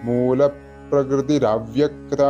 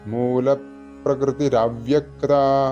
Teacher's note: വിസർഗം കഴിഞ്ഞിട്ട് ആ വരുമ്പോൾ അവിടെ സംസ്കൃത സന്ധി നിയമം അനുസരിച്ചിട്ട് ര ആണ് വരിക